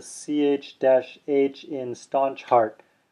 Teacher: this is going to be the same as the ch in cello but with extra air and a contraction of the diaphragm to make the extra air